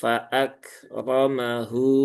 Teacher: hunya dibaca panjang dua harakat ya. dia mad silah sugra atau mad silah qasirah · Rnya tebal ya seperti rab rbuhu